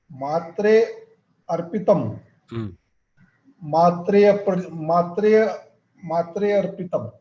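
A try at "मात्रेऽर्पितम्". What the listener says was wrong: No, see what is happening. You are struggling to elide the akara. You have to practice. So matrer pitam. So you have to jump from tre to rpi. So matrer pitam.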